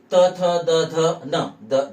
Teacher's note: यांचा उच्चार करताना आपल्या जिभेचा स्पर्श समोरच्या वरच्या दाताच्या मागच्या बाजूला होतो